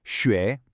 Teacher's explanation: Hear that rising pitch, like a question? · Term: second tone